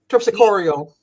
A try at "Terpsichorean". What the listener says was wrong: There's no L in there. It's an N at the end. It's spelled Terpsichoren.